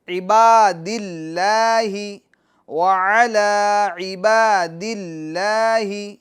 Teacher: وبرکاتہ، السلام علینا، السلام علینا، منہ کھینچنا نہیں ہے، السلام علینا وعلی عباد اللہ الصالحین، عباد اللہ، عباد اللہ، لام لفظ اللہ کے لام کو یہاں پر باریک پڑھیں گے